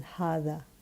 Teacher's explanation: I'm pronouncing the alif for the elongation of ha sound, but it's not written.